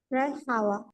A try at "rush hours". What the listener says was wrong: Please pronounce hours. Rush hours.